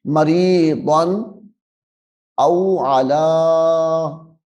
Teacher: یہاں پہ غنہ نہیں کرنا کیونکہ یہاں پہ تنوین کے بعد حرف حلقی آ رہا ہے